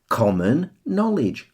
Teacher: Com and no receive the stress there.